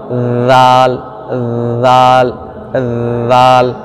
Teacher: इससे जबान को ऊपर के दांत ये जो किनारे के ऊपर के दांत है सामने के इस पर मिलाना है